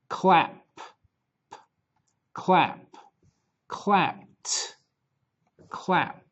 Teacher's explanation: we have a voiceless sound at the end of the verb so the Ed D sounds like T